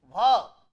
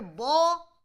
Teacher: aspirated voiced bilabial stop or it can have a unaspirated voiced bilabial stop